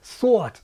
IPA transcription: thoət